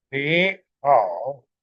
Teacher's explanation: That is, 3 plus 3 sequence becomes the 2 plus 3 one.